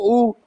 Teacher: अब ऊ बोलकर देखो, ऊ का उच्चारण करो। ऊ पूरा गोल दिख रहा है होठ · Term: वृत्ताकार